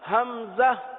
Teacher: حلق کے آخر والے حصے سے حمزہ